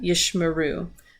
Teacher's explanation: And the first Shewa, because we see here we have two Shewas together. The first Shewa underneath the sheen here is going to be silent. The second Shewa is going to be vocal. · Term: vocal Shewa